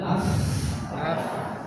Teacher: Contoh, nah sebelum sana, seperti kita mengucapkan huruf fa, ada persentuhan antara bibir bawah sama gigi di atas